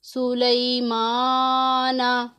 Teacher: नून ज़बर ना, सुलैमाना। इसमें सिर्फ खड़ी हरकत को लंबा करना है, हरूफ लीन को लंबा नहीं करना हमने।